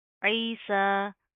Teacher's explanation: सीन के ऊपर खड़ा ज़बर आ रहा है, एक अलिफ की लिमिट के बराबर खींच कर पढ़ेंगे